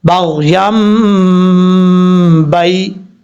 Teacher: با کے بعد جو یا ہے یہ یا لین ہے، حرف یا ساکن سے پہلے زبر ہو تو یا لین ہوتا ہے، اس کو لمبا کرنے کی ضرورت نہیں ہے